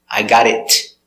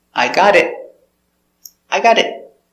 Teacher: the final T is a stop T so you don't hear T